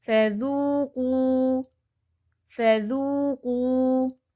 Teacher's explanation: ذو بھی 2 ٹائم لونگ ہے اور قو بھی 2 ٹائم لونگ ہے